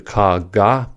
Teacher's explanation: For the ka, ga pair, the stop happens at the velum. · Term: plosives